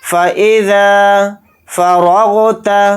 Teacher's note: را کو غین ساکن کے ساتھ ملا کر پڑھیں گے اور را کو یہاں پر موٹا یعنی پر بھی پڑھیں گے · فَإِذَا، فا کو جلدی پڑھیں گے، حمزہ کو جلدی پڑھیں گے، ذال کے ساتھ الف مدہ ہے، ذال الف زبر ذا کو تھوڑا کھینچ کر پڑھیں گے